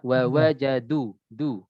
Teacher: dinamakan istifal itu lidahnya turun